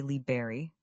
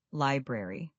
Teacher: You need to include that R sound after the B.